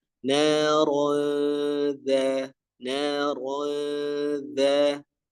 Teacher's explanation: huruf ro di sini ditebalkan terlebih dahulu ya